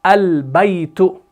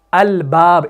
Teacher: اس میں لام کو پڑھا گیا تو یہ آپ کا قمری ہے